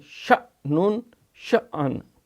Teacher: حمزہ کے اوپر جزم ہے تو جھٹکا ہوگا